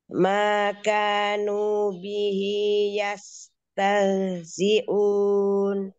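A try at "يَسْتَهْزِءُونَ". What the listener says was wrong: Agak keberatan kamu ya. Tah, tah, jangan sampai tah. Jangan masuk sampai ke dada, cukup di tenggorokan. Bagian paling bawah.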